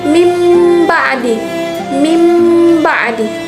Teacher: Hukum bacaan disebut dengan iqlab, yakni apabila nun sukun atau tanwin bertemu dengan huruf ba, maka cara membacanya adalah menyuarakan huruf nun sukun atau tanwin menjadi suara mim dengan merapatkan 2 bibir serta mendengung. Huruf iqlab cuman satu, yaitu ba.